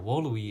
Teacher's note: in classical Latin, the V's are pronounced as W's. And here, this UI, this is a thing called a diphthong.